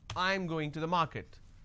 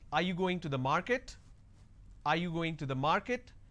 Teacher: your statement has to be flat, and when it's a question, the last word has to be a rising tone.